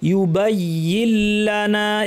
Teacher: নুন সাকিন পর লাম আছে, গুন্না ছাড়া ইদগাম, নুনটা উচ্চারণ হবে না।